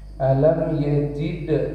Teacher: dalnya qalqalah sugro yang ada di tengah ayat